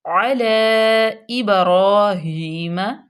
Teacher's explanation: لام پہ فتح اشبائی اور اس کو لمبا بھی کریں گے